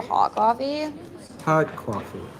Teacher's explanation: It's a combination of Valley Girl and vocal fry.